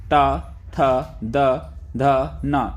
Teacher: है दंती व्यंजन जिन वर्णों का उच्चारण करने पर जीव का अग्र भाग ऊपर के दांतों को स्पर्श करता है उन्हें हम दंती व्यंजन कहते हैं जैसे कि त थ द